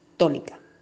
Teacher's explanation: la sílaba tónica es to, ya que la mayor intensidad la recibe esa sílaba. Las demás sílabas que acompañan esta palabra se llaman átonas, las cuales no van acentuadas, pero la palabra como tal lleva acento ortográfico en la primera A.